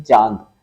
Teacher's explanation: जो चांद शब्द है यह एक अनुनासिक शब्द है और इसमें जब हम चांद बोलते हैं तो नाक और मुंह दोनों का यूज करते हैं